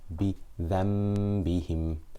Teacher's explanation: we close our lips because the Noon has changed into a Mim. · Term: Iqlab